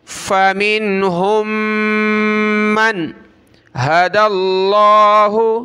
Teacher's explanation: نون پر ناک میں آواز پیدا نہیں کریں گے کیونکہ آگے جو حرف ہے وہ حروف حلقی میں سے ہے، ہا ہے